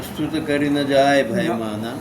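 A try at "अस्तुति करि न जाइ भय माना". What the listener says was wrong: अब स्तुति देखो, स्तुति होती है ना, यहाँ पर अ लिखा हुआ है, ये अवधी भाषा का है। हाँ, अ लगा दिया है, बात वही है।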